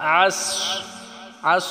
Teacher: আইনটাকে গলায় চাপ দিয়ে সোয়াদটাকে মোটা করে উচ্চারণ করতে হবে।